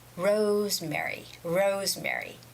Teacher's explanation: the stress goes on the first syllable, which is rose,